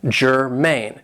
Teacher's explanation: this is two syllables and the stress is on the second syllable